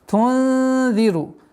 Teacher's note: мягкое ихфа, сокрытие в размере двух огласовок, то есть назализация